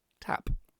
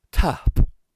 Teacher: there's a little bit of a breath running into that P sound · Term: breathiness